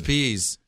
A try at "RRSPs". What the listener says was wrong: RSPs, no. Or RRSPs. Yeah, there's two. There's two R's on it.